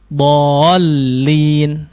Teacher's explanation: Harusnya tidak digunnahkan tapi dihantakan, bukan waladdallin. La, huruf lam tidak memiliki gunnah ya, tidak dipanjangkan kalau ditasydidkan, tapi dallin.